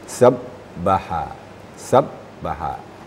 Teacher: hanya bagus ni cuma sedikit huruf ba khusus huruf ba bertasdid apabila ba bertasydid kalau kita mentasydidkannya suaranya tidak boleh mengalir